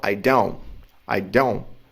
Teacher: Não se fala o T no don't. Na verdade, assim, no inglês falado não se fala.